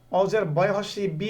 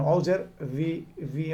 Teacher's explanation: ভি মানে দাঁতটা নিচের ঠোঁটে লাগাচ্ছে আমি।